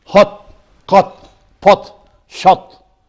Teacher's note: This vowel is back between open and half open. It is short.